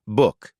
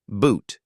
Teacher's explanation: U short and relaxed. Boot u long and tense.